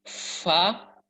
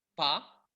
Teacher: ujung gigi seri atas menyentuh bibir bagian dalam bagian bawah, fa baru menyemburkan banyak udara